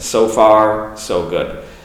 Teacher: So link those 2 O's with the consonant that follows. The F for far and the G for good. And put a little pause in the middle of it. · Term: linking